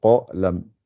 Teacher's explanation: Il n'y a que le qa qui est gonflé.